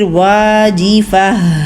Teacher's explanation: گول تا پہ وقف کر رہے ہیں تو اس کو ساکن ہا میں بدل رہے ہیں ، تو اس کو اچھا سا ٹائم دیجیے ہا کو، لیکن